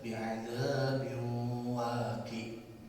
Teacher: huruf ain di ujung itu harus terdengar dengan jelas walaupun dia disukunkan atau dimatikan. Jangan sampai kita merubah menjadi huruf hamzah.